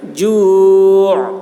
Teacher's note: عین ظاہر ہوگی، عین کو ظاہر کرنا ہے وقفے کی حالت میں